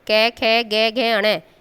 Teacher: ये हमारे गले से बोले जाते हैं व्यंजन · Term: कंठ